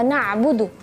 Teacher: ketika melafalkan huruf ain, khususnya ketika sukun, ya hati-hati. Jangan sampai kita membacanya hamzah.